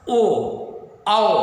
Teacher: और आठवां है ओ दौतो कंठोष्ठम, इसमें है ओ और औ, इनका उच्चारण स्थान कंठ और ओष्ठ, कंठोष्ठ, कंठ भी है और ओष्ठ का सहयोग भी है। इसे ओ कंठ से भी आवाज आ रही है और ओष्ठ का आकार भी थोड़ा परिवर्तन हो रहा है, ओठ के आकार में भी परिवर्तन हो रहा है।